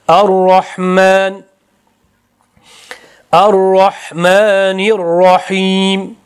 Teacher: Ar-rahmanir rahim nini cho'zmaslik kerak. Bevosita roga ulashimiz kerak.